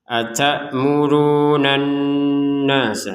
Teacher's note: Kemudian nun fathah, di sini ada nun bertasydid, maka kita langsung membacanya dengan dengungan